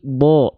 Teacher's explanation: huruf yang tebal ketika fathah dibaca terdengar seperti vokal O